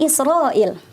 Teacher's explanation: Nah, Israil ini hukum bacaannya adalah mat wajib muttasil. Karena dia ada alif bertemu dengan hamzah dalam satu kalimat. Jadi panjangnya bisa sampai 4, 5 atau 6 harokat.